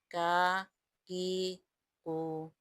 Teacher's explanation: زبان کی جڑ اور تالو کے سخت حصے سے ادا ہوتا ہے۔ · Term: کاف